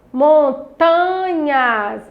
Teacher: O tá de montanhas é a sílaba tônica da palavra.